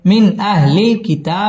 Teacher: মিন ইজহার গুন্না ছাড়া স্পষ্ট করে পড়তে হবে